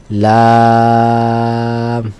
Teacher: জিহবার আগা উপরের দাতের মাড়ির সঙ্গে লাগি বলতে হবে লাম